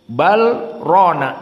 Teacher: maka antara lam sakinah dengan ro diidgamkan